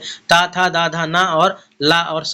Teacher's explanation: त थ द धा न और ल और सा दंत में आते हैं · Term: दंत ध्वनि